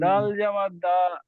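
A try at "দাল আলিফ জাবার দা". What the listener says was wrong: ডালটা টান দেন, ডাল 3 আলিফ টান। সবাই যান, ডাল 3 আলিফ টান, দাল জাবার দা। হ্যাঁ কি হবে, এক করেন। জাদা, কি বলবেন? জাদা।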